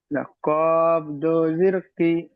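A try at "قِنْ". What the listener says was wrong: কি নয়, কিন।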